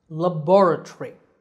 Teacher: british version sounds quite different laboratory here the second syllable is stressed ba so the word begins with a short le then we